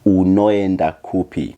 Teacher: You will find that in the Shona language, most sounds remain exactly the same and the vowels are pronounced separately even if they are coming right after the other